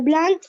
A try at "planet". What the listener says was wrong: Planet, not plant. Planet. Look, this is plant. Plant, and this is planet. Planet. There is PLANT plant, but PLANET planet.